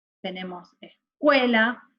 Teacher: La U es la vocal tónica y la sílaba tónica es cue, o sea, tendríamos es, cue, la, o sea, la sílaba tónica es la del medio, cue.